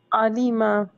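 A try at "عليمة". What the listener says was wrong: अलीमा, आइन थोड़ा सा फिर से।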